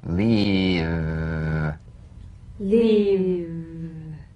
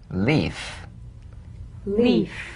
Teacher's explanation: one has a vocal cord vibration the other is unvoiced